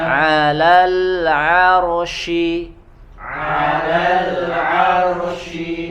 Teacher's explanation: Huruf ain dibaca tipis ya, karena bukan huruf isti'la, dan huruf ro-nya dibaca tebal karena sebelumnya harokat fathah.